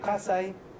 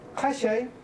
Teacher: sa contrasta con la fricativa palatal sha, que en algunas variantes son solamente variantes fónicas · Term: fricativa alveolar